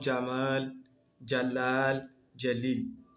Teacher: l'équivalent de la lettre J en français, avec un léger D juste devant